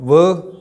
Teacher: ये दांत और ओठ से बोला गया वर्ण है या फिर व्यंजन है, तो इसको हम दंतोष्ठ से उच्चारित करते हैं।